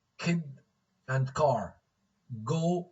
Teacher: sounds produced with the back of the tongue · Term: velar sounds